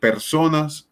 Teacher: la fuerza tónica la hacemos en la penúltima sílaba